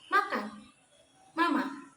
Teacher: Yang pertama ada konsonan nasal bilabial, yaitu bunyi yang dihasilkan dengan menutup kedua bibir lalu dikeluarkan secara tiba-tiba melalui rongga hidung. Jadi udara itu keluar tidak melalui mulut tetapi dari rongga hidung. Pada bunyi ini disimbolkan dengan huruf M.